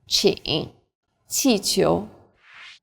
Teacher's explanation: like the CH in cheap, but again with a flatter tongue and a stronger puff of breath